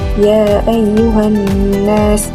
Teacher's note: mad al-munfasil, Imam Abu Ja'far akan membaca dengan 2 harokat. Contohnya ya ayyuhan nas.